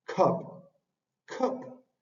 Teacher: tiene el fonema de la k tiene que es aspirada por ir al inicio de la palabra